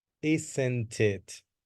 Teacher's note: you have to link the T and the I. Isn't it? Not isn't it.